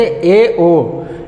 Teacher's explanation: ए और ओ के उच्चारण करने में जो है मुख्य द्वार आधा बंद रहता है, यानी कि पूरा नहीं खुलता है, तो इसको अर्ध संवृत स्वर कहा जाता है।